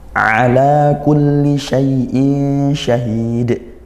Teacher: Bunyi nunnya samar masuk ke huruf shin, juga tidak masuk seperti idgham sepenuhnya, tapi tidak juga dibaca jelas sepenuhnya, inilah ikhfa gitu ya. · ada tanwin bertemu huruf syin ikhfa. Hakiqi dibaca samar dan dengung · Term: ikhfa haqiqi